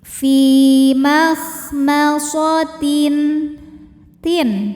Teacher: Sebab ada tanwin kasrah yang menghadapi huruf halqi atau huruf tenggorokan yaitu huruf ghain. Maka tanwin kita bunyikan dengan jelas. Jadi bunyinya n ya. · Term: izhar halqi